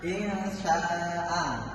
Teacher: Jadi ikhfa itu cara membacanya itu samar itu tidak jelas. Jadi itu non sukunnya itu tidak dibaca jelas, namun dibaca samar.